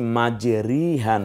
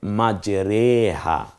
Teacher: জের খারা জেরটাকে শুধুমাত্র একটাই জায়গায় এখানে একার দিয়ে পড়তে হয় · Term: ইমালা